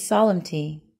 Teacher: the word is stressed on the second syllable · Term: word stress